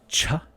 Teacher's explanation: the lips are open the teeth are slowly open the tongue is going up to the alveolar ridge and ja the same placement with the lips and teeth and